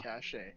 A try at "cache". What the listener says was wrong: I think it's pronounced cash. I don't think you pronounce. I don't think you pronounce the second e.